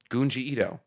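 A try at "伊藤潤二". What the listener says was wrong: It's Junji Ito. It's a J. It's not Gunji.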